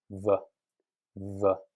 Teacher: How do you make the W sound different from the V sound? So the V sound you make by putting your top teeth on your bottom lip and making a vibration